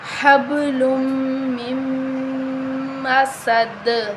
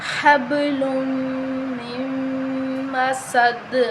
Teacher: میم مشدد ہے تو ہم اس پر غنہ کریں گے